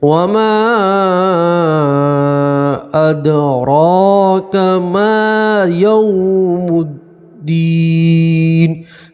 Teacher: الف و لام نہیں پڑھیں گے، ٹھیک ہے، میم کو دال سے ملائیں گے